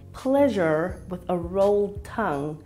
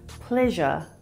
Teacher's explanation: most South Africans would say this word with a flat tongue or non-rhotic R sound.